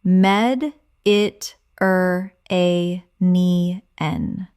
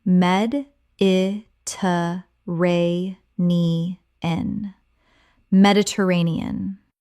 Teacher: 6 syllables with the stress on the fourth.